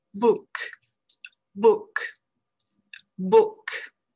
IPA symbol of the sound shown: bʊk